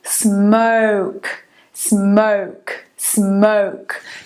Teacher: Na britânica, você fala, em vez de um O, você fala um schwa.